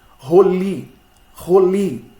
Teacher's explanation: A sílaba tônica recai na última, já que eu não tenho acentuação.